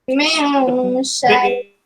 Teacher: Dia akan bergerak ke hidung sebab apa? Sebab dia nak dengung. Min syai'. Semua hidung.